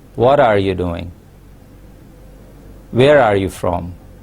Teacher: for wh questions we have a falling tone · we start with the high pitched sound and we end it with a low note